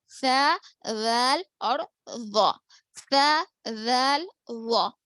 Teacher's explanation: زبان کی نوک اوپر نیچے دانتوں کے کناروں کو لگنے سے ادا ہوتے ہیں